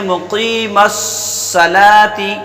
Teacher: مقیمس، تو میم کو بغیر کھینچے پڑھیں گے، قاف کے نیچے یا ہے تو اس کو ایک الف کے برابر کھینچ کے پڑھیں گے۔ پھر میم کو صاد میں ملا دیں گے، صاد پر پڑھا جائے گا، لام پہ کھڑا زبر ہے، ایک الف کے برابر پڑھیں گے، کھینچ کے پڑھیں گے۔